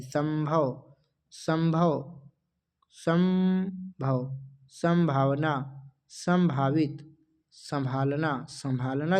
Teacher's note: संभालना जब बोलोगे तो नाक से भी जो है आवाज आएगी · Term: अनुनासिकता